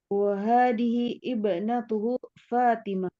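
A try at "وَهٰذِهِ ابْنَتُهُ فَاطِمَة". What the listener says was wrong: Wa hadhi pakai zi. Lidahnya Bu di zi gitu. Fatimah. Fatimah. Gitu pakai po. Bukan pakai ta. Fatimah. Fatimah begitu.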